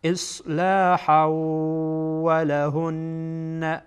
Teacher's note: بعد از تنوین واو آمده و واو از حروف ادغام هست. این تنوین را با واو ادغام میکنین. اصلاحا ولهن، ولهن، نون مشدد غنه میشه.